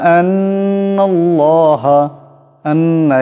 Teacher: নুন মুশাদ্দদ এক আলিফ পরিমাণ গুন্না করতে হবে